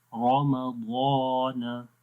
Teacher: تو پہلے ہے، سب سے پہلی کنڈیشن کیا ہے کہ را کے اوپر جب زبر ہو، مفتوح ہو، را کے اوپر جب زبر آئے گی، فتحہ ہوگا تو را کو موٹا پڑھیں گے، رمضان، ضاد کو بھی ضاد کے بعد الف ہے تو الف بھی موٹا ہو جائے گا